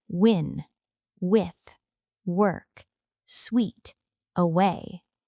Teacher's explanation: This is a voiced glide sound. The lips round briefly and then move into the next sound. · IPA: /w/